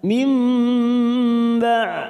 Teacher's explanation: Cara membacanya membalikkan huruf nun sukun kepada huruf ba seperti bertemu dengan huruf mim ya. Kita tekan selama 3 ketuk. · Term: bacaan iqlab